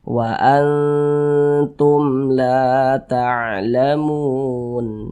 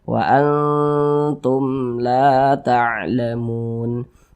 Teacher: sehingganya huruf lamnya ini dibaca panjang la dibaca panjang Mad thii panjangnya dua harakat Wa Antum laa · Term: Mad Thobi'i